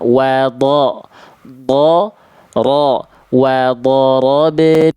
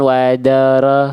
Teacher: Jadi pangkal lidah huruf dod dan huruf ro di situ kan tebal. Angkat pangkal lidahnya.